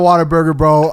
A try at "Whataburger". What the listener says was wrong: Sounds like you say water. Sounds like you said Waterburger.